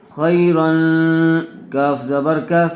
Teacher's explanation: تنوین کے بعد حروف اخفا میں سے کاف آیا ہوا ہے، اس لیے غنّے کے ساتھ اخفا کر کے پڑھیں گے